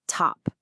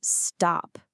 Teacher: The rule only works if the P, T, or K is at the absolute beginning. So in stop, that T is not aspirated.